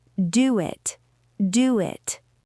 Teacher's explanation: The word do ends with rounded lips. The word it begins with a vowel. Connect them. · It happens every single time. If your lips are round, you get a W bridge. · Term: W sound